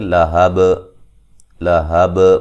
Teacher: من اللہب وقفاً با پہ جو قلقلہ ہے خوب واضح کریں گے, ٹھیک ہے. لہب لہب با پہ قلقلہ کریں گے, با کی آواز آئے گی بعد میں